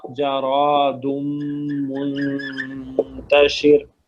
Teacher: را جو ہے نا وہ عربی میں موٹا ہے اور فتح اور دمہ کے ساتھ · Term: را موٹا